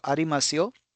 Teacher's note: Pronounce yo with slightly rising intonation and never put stress on it. So if you put stress, then it will become little impolite.